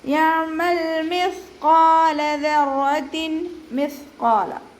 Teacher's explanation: സ ഉച്ചരിക്കുമ്പോൾ കുറച്ച് എയർ നമ്മുടെ പല്ലിൻ്റെ ഇടയിലൂടെ പുറത്തോട്ട് പോണ രീതിയിൽ ഉച്ചരിക്കുക.